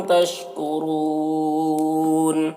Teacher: तशकुरूना और रा को पुर पढ़ेंगे, यहाँ पर वाव मद्दा है। यहाँ पर वक्फ करेंगे तो नून का ज़बर सुकून से बदल जाएगा, तो फिर यहाँ पर मद्दा आरिज़ वक्फ़ी होगा